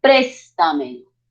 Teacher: las sobresdrújulas llevan la mayor fuerza de voz antes de la antepenúltima sílaba